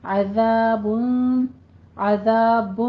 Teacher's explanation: ذال پہ نرمی رکھنی ہے، سیٹی کی آواز یہ نہیں آنی چاہیے